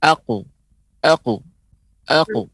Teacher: Huruf qaf ini huruf yang isti'la juga, maka dia tebal. Maka pengucapannya agak lebih berbeda dari qalqalah biasa.